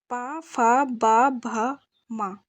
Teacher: ओष्ठ है दोनों होठों से